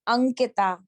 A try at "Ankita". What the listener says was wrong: So it's not Ankita. It doesn't have each syllable is equally stressed. Ankita, right?